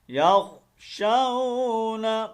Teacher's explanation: واو لین ہے یہاں پر، اس کو لمبا نہیں کریں گے